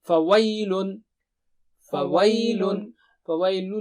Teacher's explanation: وَي جو ہے یہ نرم یا ہے، اس کو ویل نہیں پڑھیں گے